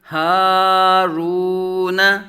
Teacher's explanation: زبر ہا، را واو پیش رو، ہارو، نون زبر نہ، ہارون، ہا کھڑا زبر قائم مقام الف مدہ، ایک الف دو حرکات کے برابر کھینچ کر پڑھیں گے